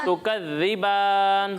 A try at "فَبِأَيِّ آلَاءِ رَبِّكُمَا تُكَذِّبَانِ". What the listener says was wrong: ذال میں سیٹی کی آواز نہیں.